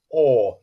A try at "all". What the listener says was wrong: Can I get the l?